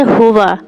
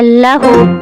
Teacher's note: ہا صرف سانس آواز کے ساتھ